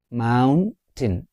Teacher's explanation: It is having how many syllables? 2 syllables. Mountain. The stress is on the first syllable. Mountain. In British English, we will say mountain.